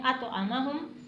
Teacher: आइन को अलग से अदा करना है